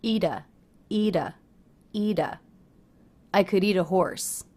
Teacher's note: the T at the end of the word eat links to the next word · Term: light D sound